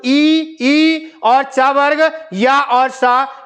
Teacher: ई और च वर्ग, या और सा, इनका उच्चारण स्थान तालु है।